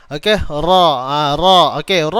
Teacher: Tapi bukanlah tekan kuat tuan-puan, kerana ra ni dia ada getaran kan, dia ada sifat takrir. Kalau dia tekan kuat, nanti dia tak ada getaran tu.